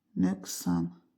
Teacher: Vurğu ikinci hecaya düşür. Düzdür. Ö inc açıq dodaqlanan.